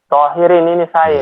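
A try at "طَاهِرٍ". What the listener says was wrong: Sampean bukan tohirin, tahirin sampean. Baca tarkik sampean bukan tohir tapi tahirin. Ini baca tafkhim to.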